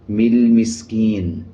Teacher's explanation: مل مسکین، لام کے اوپر جزم ہے، جزم کا مطلب ہوتا ہے کہ پچھلے الفاظ کے ساتھ ملا کے پڑھا جائے، لام کو میم کے ساتھ ملا کے پڑھا جائے گا اور الف کو سائلنٹ کر دیا جائے گا۔ · جب زیر کے بعد یا جزم والا آ جائے 1 سیکنڈ لمبا کیا جاتا ہے، یہ حروف مدہ بن جاتا ہے۔